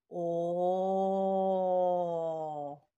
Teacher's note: Келесі дауысты дыбыс о. Ерніміз жиналып барып, аузымыз кішкене ашылады екен